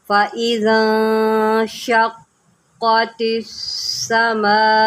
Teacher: فَإِذَا انشَقَّتِ السَّمَاءُ، یہاں پر قاف کے اوپر جماؤ کریں اور اس کو موٹا کر کے پڑھیں